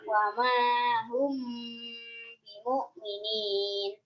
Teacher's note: Alasannya karena mim sukun bertemu dengan ba, cara bacanya dengan 3 harokat. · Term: Ifa Syafawi